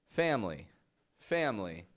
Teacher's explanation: we pronounce it so fast, family, family, that there's no time for the schwa.